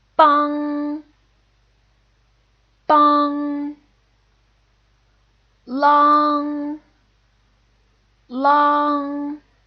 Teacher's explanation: single vowel or a group of vowels that ends in NG so the tongue's position is in the back of the throat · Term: back nasal finals